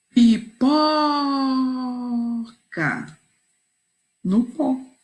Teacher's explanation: Não tem acento, porém o pó pronunciamos com mais força, com mais intensidade. E ele tornou essa sílaba a sílaba tônica do nome da imagem.